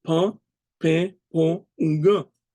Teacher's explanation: the air that comes out of your lungs from their utterance passes through both your mouth and your nose. And if you try to hold in your nose as you say these sounds, you will see that the air tries to come out of your nose. · When these vowels are uttered, they produce a nasal sound. That's because the air that comes out of your lungs from their utterance passes through both your mouth and your nose.